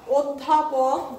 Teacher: অধ্যাপক বলছি, অ হয়ে যাচ্ছে ও